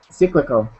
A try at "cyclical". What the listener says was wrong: instead of that E sound, it's I. So cyclical. Try that.